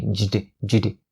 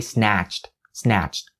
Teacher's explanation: So its ending sound is going to be cht, cht. And keep in mind, once again, these sounds are actually voiceless consonants. So cht, don't say jd, jd.